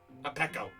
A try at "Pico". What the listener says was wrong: it is pronounced Pico. Pico with two E's instead of Pico with an I.